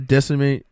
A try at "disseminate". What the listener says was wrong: Disseminate. You said decimate. No, words matter.